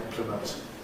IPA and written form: ˈɪmplɪmənt (implement)